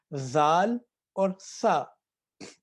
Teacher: زبان تو دانتوں کے اندر ہے لیکن موٹا کر کر نہیں پڑھنا، باریک پڑھنا ہے